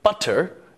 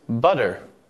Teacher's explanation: we're changing the T sound to a D sound because it's more efficient for our vocal organs to move in that pattern.